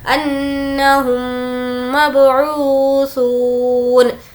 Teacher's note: ऊ में वाव मद्दा है, खींच कर पढ़ेंगे और सू में भी वाव मद्दा है, खींच कर पढ़ेंगे।